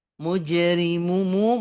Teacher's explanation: tengah-tengah lidah tadi wasat alhq sekarang Jim wasat alisan tengah-tengah lidah dan sifatnya dia ee jahar dan syiddah tertahan nafasnya dan suaranya kemudian Qalqalah qol qalah memantul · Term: Qalqalah Sugra